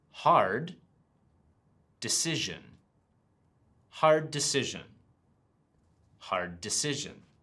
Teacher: sometimes that final D or T sound at the end of a word will disappear if the next word starts with a similar sound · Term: Combined sounds